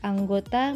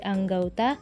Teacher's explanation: masih diucapkan dalam satu Puncak kenyaringan jadi masih dalam satu silabel misalnya kata anggota menjadi anggauta Bunyi o berubah menjadi au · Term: diftongisasi